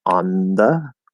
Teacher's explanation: the N can be made on the teeth, especially if it's, say, N plus TH, and then we end up using like the dental T or D version of the TH, like on the.